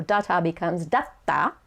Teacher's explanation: it shows that there's a pause between the da and the ta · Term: small tsu